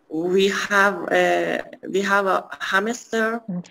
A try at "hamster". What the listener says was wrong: Hamster نیست. ببینید بین M و S هیچ ای وجود نداره. Hamster.